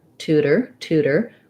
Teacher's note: All right, so for tutor, we have first syllable stress, tense oo